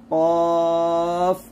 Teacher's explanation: জিহ্বার গোড়া তার বরাবর উপরে তালুর সঙ্গে লাগিয়ে একটু উচ্চারিত হয়, তা হচ্ছে কফ, এটা জিহ্বার গোড়াটা তার বরাবর উপরে তালুর সঙ্গে লাগাবো, কফ এরকম।